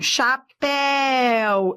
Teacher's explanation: Eu tenho aqui ditongo. Ó, decrescente. Eu fui do forte para o fraco. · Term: ditongo decrescente